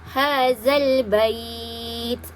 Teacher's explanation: Jadi bila diberhentikan ataupun diwaqafkan, dia akan menjadi mad lin, ya. Hukum bacaan dia 2, 4 ataupun 6 harkat, ya. Yang terbaik kita baca 6 harkat.